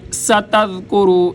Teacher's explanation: سین سختی کے ساتھ سیٹی کی آواز، ذال کو نرمی کے ساتھ، کاف باریک، را موٹا۔